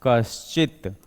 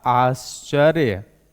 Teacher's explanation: विसर्ग के बाद च का आ रहा है वर्ण, तो विसर्ग क्या हो जाएगा, आधे तालव्य स में बदल जाएगा